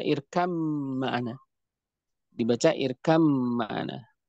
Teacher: ba-nya dimasukkan ke dalam mim secara sempurna, sehingga dinamakan dengan idgham kamil